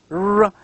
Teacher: Now the R sound here at the beginning of the word red also is formed with the tongue tip raised and curled back near the alveolar ridge. So when you pronounce r, r, you feel that the tongue curled back exactly near the alveolar ridge.